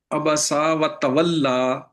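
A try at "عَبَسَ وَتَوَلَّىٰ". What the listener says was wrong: سین کو چھوٹا رکھیں، دوبارہ پڑھیں۔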